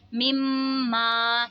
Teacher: ये मीम मुशद्दद है इसीलिए इसमें गुन्ना करेंगे। अलिफ से पहले ज़बर है तो अलिफ मद्दा होगा।